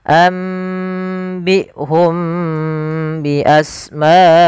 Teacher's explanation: Cara membacanya, mimnya ditahan dulu, jangan langsung ambihum bi asmaihim, tapi tahan dulu nya. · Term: ikhfa syafawi